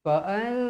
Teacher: Nun bertemu huruf jim. Baik, nun bertemu huruf jim, kita mestilah baca dalam keadaan dengung dalam kadar 2 harakat. Slow-slow. Fa'anjaynahu.